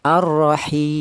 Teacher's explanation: boleh dibaca dua alif atau empat harakat